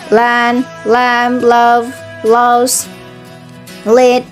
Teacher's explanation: clear or light L occurs at the beginning of the words and before vowels